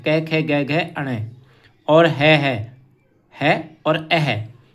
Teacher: कै, खे, गै, घै, अणे, और है और अह, इनका उच्चारण स्थान होता है कंठ